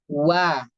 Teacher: ketika kita mengucapkan huruf yang berharakat fathah itu dibuka mulutnya lebar walaupun wau ini harakatnya fathah tetap dibuka lebar